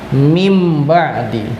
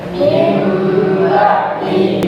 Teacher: Ya, bunyi suara nun sukun atau tanwin bunyinya berubah menjadi huruf mim. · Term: iqlab